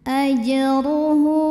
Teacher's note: Huruf ra dibunyikan secara tafkhim karena ra berbaris dhammah, maka dibacanya tebal.